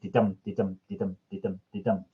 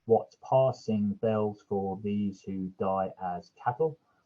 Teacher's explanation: it gives you an unstressed followed by a stressed syllable, and it does that 5 times throughout a line. So 10 syllables in total. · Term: iambic pentameter